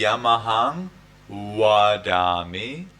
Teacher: we do not have V sound in Burmese we have only wa